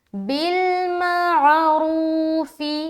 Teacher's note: را کو موٹا بھی رکھنا ہے اور کھینچیں گے کیونکہ واو مدہ بھی کر رہے ہیں